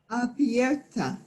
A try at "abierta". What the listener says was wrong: Abierta, perfecto.